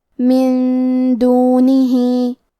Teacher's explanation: ہم نون ساکن کو چھپاتے ہوئے اور غنہ کے ساتھ یہ حکم کو ادا کریں گے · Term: اخفاء